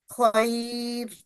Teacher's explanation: खैर, ये रॉ भी बारीक पढ़ी जाएगी किस वजह से? ये या साकिना की वजह से, ना कि ये ख्वा की फतह की वजह से।